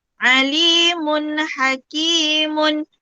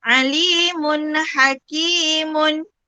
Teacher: Tanwin bertemu dengan ha. Mesti dibaca dengan jelas dan terang. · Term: izhar halki